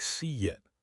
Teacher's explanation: We insert invisible W's and Y's to make the vowels flow. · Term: intrusive sounds